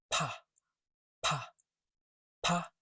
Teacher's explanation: with a small puff of air. Same lips, same breath, but there is the main difference between Chinese B and P. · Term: strong P